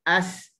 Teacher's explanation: Suara yang desiran yang keluar daripada hujung lidah dengan celahan gigi. Okey, sebab tu kita akan dengar as tajam kita dengar. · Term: safir